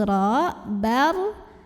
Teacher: tanwin fathah yang bertemu huruf ro maka tanwin fathahnya masuk ke Robbal tanpa didengungkan Jadi cukup ditekan [Musik] secara tafkhim sebab roh berbaris fathah cara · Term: idgham bilagunnah